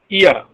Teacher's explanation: The glide begins at a front unrounded vowel just above the half closed position.